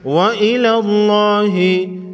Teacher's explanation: وَلِلَّهِ مَا فِي السَّمَاوَاتِ وَمَا فِي الْأَرْضِ وَإِلَى اللَّهِ۔ لفظ اللہ سے پہلے حرف لام پر زبر ہے، لفظ اللہ کے لام کو موٹا پڑھیں گے